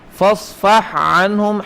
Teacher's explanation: ہا اور عین متجانسین ہیں لیکن ان کا ادغام نہیں کرنا